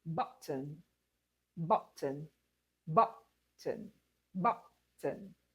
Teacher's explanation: the word button is a noun. It has two syllables and we're stressing just the first syllable.